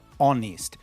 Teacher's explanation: The word honest has a H in the spelling, but in the phonetics, in the pronunciation, it doesn't. It begins with an O. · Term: silent H